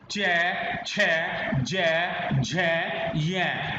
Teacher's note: अब देखिए च, छ, ज, झ, य, हमारी जीभ कहाँ पे लग रही है, तालु पे, तो ये उच्चारण स्थान हो गया तालु